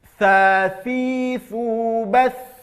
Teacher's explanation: ujung lidah akan keluar sedikit dari batas gigi kita, seperti menggigit ujung lidah. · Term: huruf tha